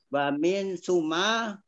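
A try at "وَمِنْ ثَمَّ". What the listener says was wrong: Kan dua huruf min summa. Itu bukan wa min summa, wa min sama.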